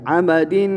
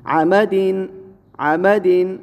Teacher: کیوں؟ اس لیے کہ آگے دیکھیں حروف حلقی میں سے عین ہے عین تو یہاں غنہ نہیں ہوگا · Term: بغیر غنہ کے